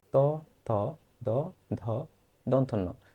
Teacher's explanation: দন্ত হচ্ছে দাঁতের কাছে যেগুলো লেগে এসে যে ধ্বনিগুলো উচ্চারিত হয় সেগুলোকে বলা হয় দন্ত ধ্বনি। দেখো, ফুসফুস হতে তাড়িত বাতাস কণ্ঠনালী দিয়ে প্রবেশের সময় জিভের পাতা উপরের পাটির দাঁতের সংস্পর্শে এসে যে ধ্বনিগুলো হয় সেটাকে বলা হয় দন্ত ধ্বনি